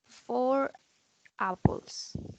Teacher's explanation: we pronounce the R because the word apples start with a vowel. So we have to pronounce the R to make a bridge and a connection in the speech.